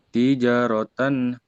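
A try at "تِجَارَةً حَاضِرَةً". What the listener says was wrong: Ja-nya panjang. Ja-nya panjang. Tapi nggak boleh putus. Tijaratan hadirotan.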